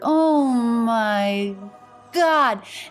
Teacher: this phrase usually we're gonna have stress on the first and the last word oh my God and again the letter O making the ah